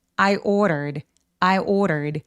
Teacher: ordered r가 모음 사이에 끼어 있는데 이런 경우에 d를 굴려서 발음할 수 있어요. 그래서 ordered라고 르라고 소리를 내는데 마치 스페인어에서 왜 마르게리다 할 때 굴려가는 그 소리가 맞아요.